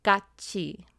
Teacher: If you have the consonant tiut followed by the vowel e, it gets pronounced as chi instead of t.